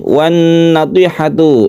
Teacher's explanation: idgham syamsiyahnya itu al bertemu dengan nun sehingga membentuk tasydid nun, sehingga membacanya itu harus gunnah atau kita dengungkan